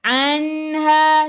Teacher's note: Nun ada sukun jelaskan nun izhar halki. Daripada kerongkong bukan daripada hidung